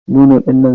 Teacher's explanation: nunun ɗin nan za mu mai gunna sabida ya zo da shadda